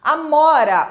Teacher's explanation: Então, esse A aqui é uma vogal reduzida. Amora, o mó é tônico. Então, os dois As, o do começo e o do final, são vogais reduzidas.